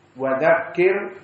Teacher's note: Maka wa dzakirhum bi ayyamillah di sini wa dzakir, maka waw dan za termasuk huruf yang istifal, maka muraqqaqah semuanya